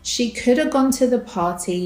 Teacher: the word have is reduced to the schwa sound